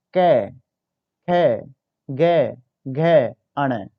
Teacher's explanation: कंठ ग्रुप में कह सकते हो आप, कंठ वर्ग से बिलोंग करते हैं, क्योंकि हमारे गले से बाहर निकल कर आते हैं ये